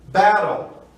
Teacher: O T passa a ter som de R e uma palavra de 2 sílabas. Essa mesma técnica se aplica nessa regra quando temos vogal, T, vogal mais R. · essa última vogal passa a não ter som, uma silent letter, e o L passa a ser uma consoante silábica, já que no inglês se conta sílabas numa palavra através dos sons de vogais.